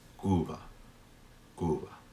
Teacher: But Cuba is a little bit different. That be is in between vowels, and it is pronounced very softly, and it's almost as if my lips hadn't touched.